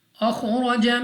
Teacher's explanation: खौ और रॉ एक मुस्तालिये में से है तो हमने इसको पुर पढ़ना है, और रॉ पर ज़बर है तो रॉ को भी हम पुर पढ़ेंगे यानी मोटा।